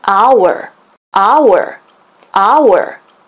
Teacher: H가 silent H, 묵음 처리가 됐죠. 그렇다면 O, 첫 소리가 되겠습니다.